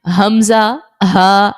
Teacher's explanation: حمزہ ہا جو ہے یہ حلق کے ہمارے نیچے والے حصے سے ادا ہوتا ہے۔ ہمارے حلق کی جو نا 3 پارٹس ہیں، ایک ہوتا ہے نیچے والا حصہ، دوسرا درمیانہ حصہ اور اوپر والا حصہ، جس کو اقصائے حلق، وسط حلق اور سب سے اوپر والے کو ادنائے حلق کہا جاتا ہے۔